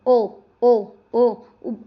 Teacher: अंदर ही अंदर आवाज आ रही है, कंठ और ओष्ठ, क्योंकि होठ भी तो अपना आकार बदल रहे हैं, ओ आपस में क्या हो रहे हैं, मुड़ रहे हैं।